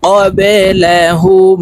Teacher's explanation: এই হা তাসদিদওয়ালা মিমের সাথে গুন্নার সহিত পড়তে হবে।